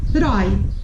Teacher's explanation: o O vai ser vogal. E o I vai ser semivogal. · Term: Ditongo